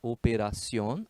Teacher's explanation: Foi acentuada, porque é uma palavra aguda, operación, a sílaba tônica é a última